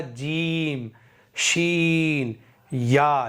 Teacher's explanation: ज़बान का बीच ऊपर के तालु से मिलकर अदा होते हैं